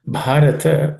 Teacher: in the word Bharata, the Bha is aspirated, being the fourth letter in the per class of consonants.